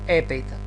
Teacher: Бидејќи не читаме хепејта, спиритусот значи е ленис, не е аспер, значи правилна запирка, и споради тоа не читаме здив х пред епејта, туку само епејта